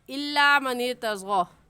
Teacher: تو تشدید کے پڑھنے کا طریقہ اچھے سے اپنے ذہن نشین کر لیں کہ تشدید کو ہم سختی کے ساتھ ذرا رک کر پڑھتے ہیں۔ من ارتضی میں را ساکن سے پہلے زیر آ گئی تو یہ را باریک پڑھی جائے گی